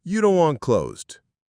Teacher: The T in don't and want often vanishes in American English.